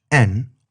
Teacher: When you say an, your tongue is low and relatively back in your mouth. And when you say n, your tongue moves upwards.